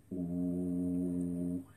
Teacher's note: C'est le son OU, qui est le son qu'on peut prononcer de la façon la plus grave. Et il résonne justement dans le bassin.